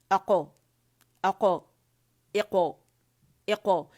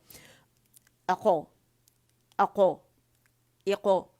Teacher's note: حمزہ پہ فتحہ لگا کے قاف ساکن کے اس کا قلقلہ واضح کیا، اس سے اس کی آواز واضح ہو جائے گی اور مخرج کو ہٹ کرے گا.